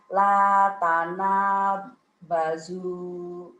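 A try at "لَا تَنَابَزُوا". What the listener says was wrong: Tekanannya kurang bagus, Bu. Kayak yang ragu-ragu ya. La tanah bazu.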